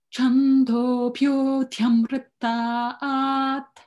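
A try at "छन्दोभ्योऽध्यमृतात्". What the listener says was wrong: Just the swara here. Dhyamratat. It goes up.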